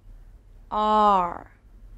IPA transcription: ɑːr